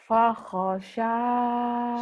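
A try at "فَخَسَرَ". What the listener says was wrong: Sinnya kecil, Neng. Sinnya kecil. Sanya panjang. Fakhosaro.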